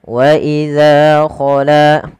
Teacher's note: Panjangkan huruf za dan la kedua-duanya sama karena ia mad thobi'i